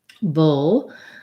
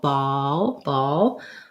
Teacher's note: This is the first one where I'm really going to think about having the glide O. In bull and ball, I still need to keep my back of my tongue down to get that dark L, but it's not going to be so much of a glide between two vowels.